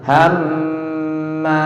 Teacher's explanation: tahan sedikit mimnya. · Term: gunnah